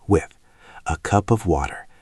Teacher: When you say the word with, make sure your tongue is just between your teeth for that th sound. It's a soft sound.